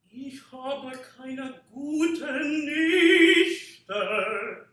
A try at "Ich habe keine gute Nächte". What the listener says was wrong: Can you open up the vowel on the Nächte?